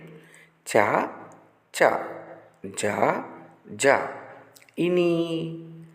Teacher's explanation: ఈ అక్షరాలను పలికేటప్పుడు నాలుక పైనున్న దవడ భాగాన్ని అంటే తాలువు భాగాన్ని తాకుతుంది. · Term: తాళవ్యాలు